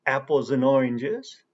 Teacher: first we have and, which is pronounced as n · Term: reduced speech